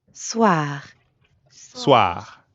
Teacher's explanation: Ah, soir. soir, But soir also ends in R. So we've got that really light gargling in the throat